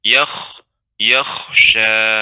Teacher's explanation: kha juga termasuk huruf isti'la. Sehingga ketika sukun dibaca dengan tebal